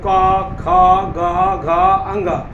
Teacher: इस पांचों को अगर बोलना है तो देखिए कहां से आवाज आ रहा है? तो कंठ से आएगा।